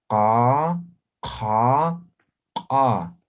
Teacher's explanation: Ahora el postvelar, ubiquen la posición, es la garganta